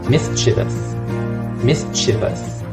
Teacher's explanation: With the difference in the vowel sound here, in British accent, it's the E sound, the lax vowel, E.